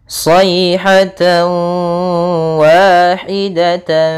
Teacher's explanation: hukum tajid berupa Idam Munah yaitu tanwin bertemu dengan huruf wau cara membacanya adalah tanwinnya kita masukkan kepada huruf wau